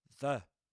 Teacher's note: The with a short e sound, just like at the end of happy.